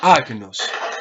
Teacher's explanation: la fuerza se hace en la primera sílaba